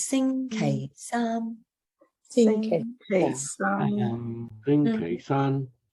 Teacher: And I chose Sing K Sam because you're going from the high Sing down low K, back up Sam. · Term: high, low, high